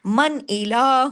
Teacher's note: من الہ، پورا یعنی حمزہ حرف ہلکی ہے نا، اس لیے اظہار ہلکی ہوگا۔ نون ساکن کے بعد اگر حرف ہلکی آئے تو پھر اظہار ہلکی ہوگا، کھلم کھلا اظہار کے ساتھ